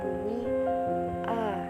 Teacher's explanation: diposisi Tengah terdapat bunyi a dengan tekanan rendah namun bentuk mulut tidak bulat